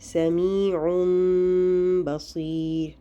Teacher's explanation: اس میں ہم نون کی آواز کو میم سے بدل کر پڑھتے ہیں۔ اس کی علامت ایک چھوٹی سی میم ہوتی ہے جو کہ آپ کو ڈلی ہوئی نظر آتی ہے، اس لیے اس کو پہچاننا بہت آسان ہے کہ یہاں ہم نے نون کی جگہ میم پڑھنا ہے اور غنہ کے ساتھ پڑھنا ہے۔ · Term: اقلاب